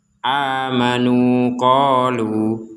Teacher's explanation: kalau kita berhenti di qolu maka kembali kepada panjang awal yaitu dua harakat